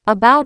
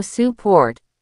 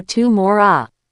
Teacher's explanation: The schwah is the lazy sound, a tiny neutral ah that replaces almost any vowel when it's not stressed